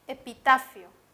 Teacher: Tiene la mayor fuerza de voz en ta, la penúltima sílaba.